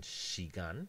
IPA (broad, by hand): ʃigan